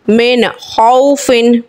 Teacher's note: नून साकिन के बाद खा आ रहा है, हुर्फ़े हल्की का है, कायदा यानी गुन्ना नहीं करेंगे